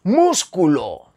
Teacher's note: la sílaba tónica es la antepenúltima la tercera empezando por el final músculo lleva tilde porque porque la sílaba tónica es la antepenúltima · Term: palabras esdrújulas, esdrújulas